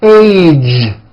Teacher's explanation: Be sure to keep the voicing going throughout the whole word. Age. It's not H, it's age with a voiced ending. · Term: American J sound